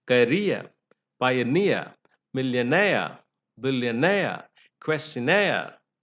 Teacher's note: they are stressed on the suffix